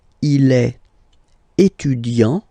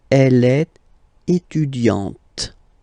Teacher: you don't really insist on the e, but you insist quite much on the t